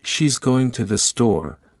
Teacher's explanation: in she's going to the store, going and store are stressed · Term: sentence stress